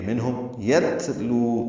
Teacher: میم ساکن پہ اظہار ہے، یہ اظہار شفوی ہے، منہم یتلو، تا ساکن باریک پڑھا جائے گا، اس پہ ہمس ہوگا · منہم میں اظہار ہے، نون ساکن ہے، اس کے بعد ہا رہا ہے، میم ساکن پہ اظہار ہے، یہ اظہار شفوی ہے